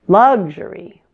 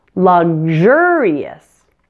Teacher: the word luxury stresses the first syllable luxury but luxurious stresses the second syllable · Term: stress pattern